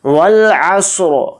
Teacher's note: والعصر، تو دھیان سے دیکھیں را کو ہم نے ساکن اس لیے کیا، را کے نیچے زیر نہیں پڑا کیونکہ یہاں پر آیت ہو رہی ہے، اور حالت وقف میں را کو ساکن کر کے پڑھیں گے